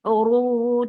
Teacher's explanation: Uru 2 counts long and make it heavy.